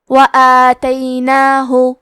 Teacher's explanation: کلمت وآتیناہ میں الف پہ کھڑا زبر ہے تو یہاں مد الف ہے تو ہم مد الف کو ظاہر کریں گے